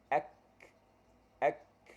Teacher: Pangkal lidah naik dekat langit-langit keras, dekat border tu, dekat tulang langit-langit antara langit-langit lembut dengan langit-langit keras. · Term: huruf kaf